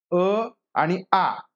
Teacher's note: अ अ आणि आ तर हे स्वर कशामध्ये येतात तर पहा कंठेमध्ये येतात